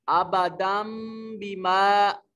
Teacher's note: نون ساکن اور نون تنوین کے بعد حرف اقلاب با ہو تو اس کو چھوٹی میم سے بدل دیتے ہیں اور پھر غنہ کر کے پڑھتے ہیں · دال کے اوپر تنوین ہے، نون تنوین کے بعد با حرف اقلاب اور اس نون تنوین کو چھوٹی میم کے ساتھ بدل دیا ہے